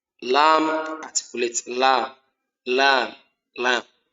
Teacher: we only use the edge of the tongue